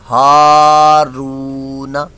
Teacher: را واو پیش رو، یہ واو مدہ ہے اور اس کو بھی ایک الف دو حرکات کے برابر کھینچ کر لمبا کر کے دراز کر کے پڑھیں گے، ہارو، اور نون پر صرف حرکت ہے، حرکات کو بغیر کھینچے بغیر جھٹکا دیے معروف پڑھتے ہیں، اس کو لمبا نہیں کرنا۔ ہارون نہ، ایسے نہیں ہارون، یہ نا کو لمبا نہیں کرنا، نہ اتنی سوا، ہارون۔